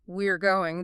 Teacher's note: the R often reduces rapidly to just an R sound, maybe preceded by a slight schwa quality.